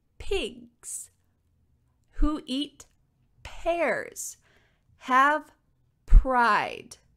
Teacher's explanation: my mouth is in the same position as a be but this time there's only air we're not feeling those vibrations from the sound coming out